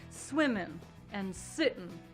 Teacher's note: drop the NG sound at the ends of words.